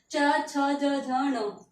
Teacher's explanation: च वर्ग का उच्चारण स्थान तालु, च वर्ग में भी 5 वर्ण होंगे आपके।